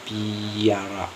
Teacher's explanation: tapi dibaca kayak ada Y setelah P, yaitu piara, ada bunyi Y nya di dalam